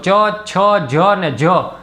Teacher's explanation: જીભ છે તમે ચ, છ, જ અને જ બોલશો તો જીભ ઉપર તાળવાને સ્પર્શ કરે છે, માટે તે તાલવ્ય પ્રકારનો ચ વર્ગનો વ્યંજન છે.